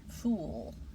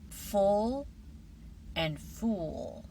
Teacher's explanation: The o sound rounds your lips much more.